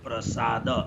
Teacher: दन्त्य स भनेको स बोल्दाखेरि जिब्रो दाँतमा ठोकिनेलाई स, दाँततिर जिब्रो जानेलाई स, अर्को तालुतिर जिब्रो गयो भने श, अनि मूर्धनातिर जाँदाखेरि श।